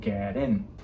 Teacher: the last consonant of a word is going to roll into the beginning of a word that starts with a vowel so instead of saying get in It's Gonna become get in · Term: connected speech